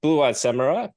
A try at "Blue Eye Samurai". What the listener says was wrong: Blue eye. There's no D. So point that out. You're saying blue-eyed. It's just blue eye. Blue eye samurai. It's not about the number of eyes. It's just the way it's written. Pronounce things the way they're written.